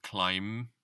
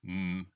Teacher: climb ends in a mmm sound which is voiced